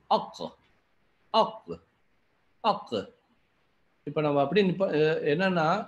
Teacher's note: இப்போது அந்த 'க'வுக்கு 'அக், அக், அக்'; இது தொண்டையின் ஆழத்தில் வரும் 'கா' என்பதால், நாம் 'அக்' என்று சொல்லும்போது, அதற்குப் பிறகு காற்று வெளியே வருவதில்லை.